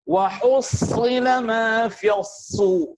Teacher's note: Ketika sad berharakat dhammah, maka disitulah sad harus dimencucukkan.